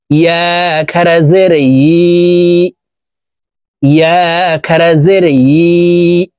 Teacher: ইয়ার উচ্চারণ জিহ্বার মধ্যখান থেকে পড়তে হবে।